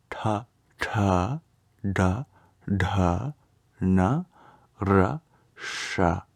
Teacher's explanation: we curl our tongue back when we say it as we do for all of the Sounds in this row curl the tongue back and tap the hard pallet